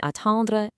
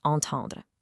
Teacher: With attendre, that first A is an oral vowel, remember? No air from the nose. But with entendre, that first A is already a nasal vowel. The air is coming from your nose right from the get-go.